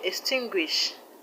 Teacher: The word extinguish, the stress is on TIN, tin.